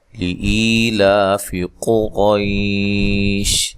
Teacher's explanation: لا مد اصلی ہے، فا کو لمبا نہیں کرنا، زبر زیر پیش کو لمبا نہیں کیا جاتا۔ قاف کو موٹا ادا کرنا ہے، را کو موٹا ادا کرنا ہے۔ را کے اوپر زبر ہو، را کو موٹا ادا کیا جاتا ہے، اور قاف موٹے حروف میں سے ہے جو کہ 7 ہیں۔